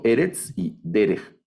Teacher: Solo tienen dos sílabas y cada sílaba tiene una vocal segol